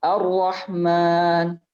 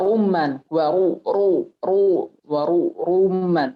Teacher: Ra-nya kalau fathah atau dhammah maka dia bacanya tebal. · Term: ra tebal